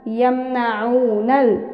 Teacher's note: এখানে মিম সেকিনের বামে নুন অর্থাৎ মিম সেকিনে ইজহার আমরা গুন্নাহ ছাড়া পড়ব।